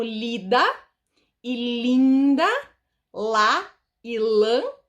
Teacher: O que faz a diferença entre uma palavra como lida e linda, lá e lã, é apenas essa vogal nasal.